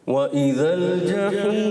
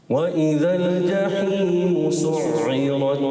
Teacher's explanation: وإذا السماء كشطت وإذا الجحيم سعرت. اچھا حروف مدہ کو ہم نے بہت زیادہ نہیں کھینچنا ہے, ایک ہی الف رکھنا ہے